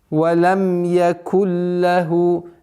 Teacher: нун переходит в звук лям полностью, без назализации. И ассимилирование полное. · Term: идгам биля гунна